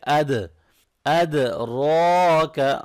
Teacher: اد دال ساکن پہ قلقلہ ہوگا، قاف طا با جیم دال، یہ 5 لیٹر جب ساکن ہو تو ان پہ قلقلہ کرتے ہیں، آواز کو تھوڑا سا ہلا کے پڑھتے ہیں، ٹھیک ہے۔